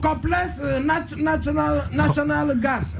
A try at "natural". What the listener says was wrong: Compressed natural gas. It's not national. Natural.